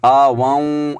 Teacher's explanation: والذین آووا ونصروا، یہاں پر ایک اور غلطی کی جاتی ہے کہ جب ہم واو مشدد سے ملاتے ہیں تو کچھ لوگ یہاں پر غنہ کر لیتے ہیں، آ واؤں ایسے پڑھ لیتے ہیں، یعنی آواز کو ناک میں لے جاتے ہیں